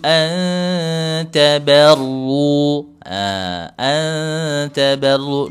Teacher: nun sukun ber huruf ta disamarkan nun sukunnya kemudian diarahkan ke huruf ta